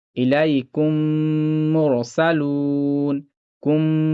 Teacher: میں آپ کو پہلے بتایا تھا کہ میم ساکن کے بعد اگر میم آتا ہے تو ادغام شفوی ہوتا ہے، جو میم ساکن ہے یہ والا نہیں پڑھا جائے گا، تو کاف اس میم میں مل کر پڑھا جائے گا، اسی کو ادغام کہا جاتا ہے۔ اور میم پر تھوڑا سا رک کر پڑھنا ہے کیونکہ یہاں پہ غنہ ہوگا۔